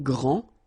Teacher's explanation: Okay, so phonetically what you can hear is that this first form here for the masculine, grand, so you don't pronounce the final D, will be exactly the same as the plural form for the masculine, grand.